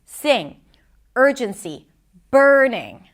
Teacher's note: She goes higher in pitch, but she also adds this emphasis, right? More volume, more intensity in her voice